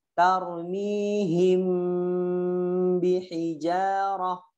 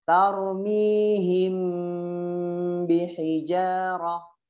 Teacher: cara baca ikhfa syafawi adalah ditahan apabila mim sukun bertemu dengan ba